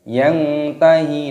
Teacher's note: nun sukun bertemu dengan ta, ikhfa disamarkan, dibaca samar. Yang tahi itu namanya bersamar.